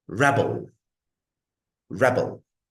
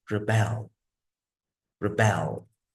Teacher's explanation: when it's noun the stress is on the first syllable when it's verb the stress is on the second syllable let's pronounce it according to the way it is a noun